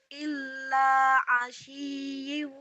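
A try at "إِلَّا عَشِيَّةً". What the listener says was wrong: illa asyiyatan. Kenapa jadi asyiyi? Asyiyatan.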